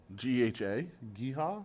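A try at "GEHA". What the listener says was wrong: But you don't pronounce it. You just letter it.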